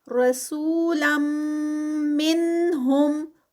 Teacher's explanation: آگے پھر تنوین ہے اور تنوین کے بعد میم ہے تو یہاں پر ادغام ہو رہا ہے اور ادغام ود غنہ ہوگا